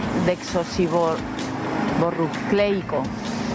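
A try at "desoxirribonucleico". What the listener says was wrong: ¿No? Le falta una sílaba por ahí.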